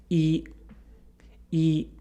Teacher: is a high front vowel it's also considered a closed vowel as the jaw is relatively closed when we say it